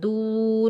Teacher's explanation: آگے واو ساکن ہے، دال کو ہم واو ساکن کے ساتھ ملائیں گے اور ایک الف کی مقدار کھینچ کر ادا کریں گے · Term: واو مدہ